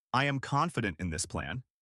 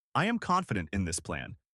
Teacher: with a clear downward inflection